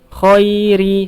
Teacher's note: Khoi, dia bukan panjang kho, tapi khoi karena huruf ya bertemu sebelumnya huruf yang berharokat fathah. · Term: madlin